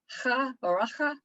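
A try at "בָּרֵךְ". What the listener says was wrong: Barech. Just barech. There's no vowel that we say inside the final chaf, final kuf.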